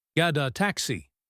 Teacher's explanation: A is a vowel. So we have a vowel t vowel link. Gada taxi. It sounds like get a taxi.